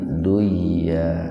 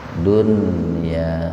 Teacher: karena dalam satu kata maka harus dibaca idhar, nunnya dibaca jelas. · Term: idhar wajib